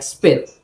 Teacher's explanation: the p is pronounced without that puff of air it's still a p sound but with less of forceful release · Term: unaspirated p